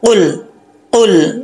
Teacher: ज़ुबान की जो जड़ें हैं उसके साथ लगेंगी तो ये कौफ पड़ा जाता है मोटा।